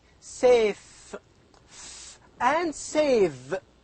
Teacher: the upper teeth and the lower lip these two are responsible to produce these two sounds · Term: labiodentals